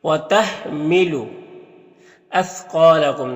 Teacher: سا کی آواز باریک ہوتی ہے اور قاف حروف مستعلیہ میں سے ہے تو اسے پر پڑھیں گے